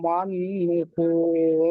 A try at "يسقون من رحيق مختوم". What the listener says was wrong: এটা আছে নুন নেই এটা খ এটা খ মাহ মিম খ জবর মাহ তা ওয়াও মিম পেশ তুম মাখতুম